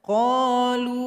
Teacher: Berhenti lagi di qalu karena melihat kepada makna. Jadi lam yang toma, lu, dipanjangkan 2 harokat saja karena kita enggak gabung dengan huruf hamzah. Jadi 2 harokat saja.